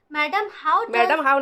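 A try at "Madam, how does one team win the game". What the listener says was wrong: नहीं, यहाँ पे मैडम कोमा है, पढ़ने का भी एक लहजा से पढ़ना है, ठीक है, तरीका से, ठीक है। मैडम के बाद कोमा है, तो मैडम हाउ does one team win the game, ठीक है, एक टीम कैसे गेम को जीतता है, जीतता है बोले, जीतेगा नहीं बोल रहा है यहाँ पे, डज है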